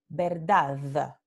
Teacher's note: En algunos lugares se produce la aproximante como verdad. Estamos hablando aquí, final del enunciado.